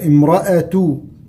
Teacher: إذ قالت امرأة، تنتبه للهمزة إذا كانت مفتوحة وكانت في وسط الكلام، امرأة، كل الكلمة مرققة إلا الراء طبعا مفتوحة